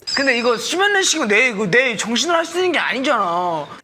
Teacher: that really short drop at the very end of his sentence on the final syllable